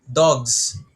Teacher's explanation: Itong S, even though yung pagkakabasa sa kanya is parang may pagka-Z or Z, dogs, it still emphasizes plural.